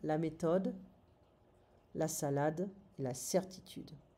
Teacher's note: we don't pronounce the TH in French, it's going to be a T sound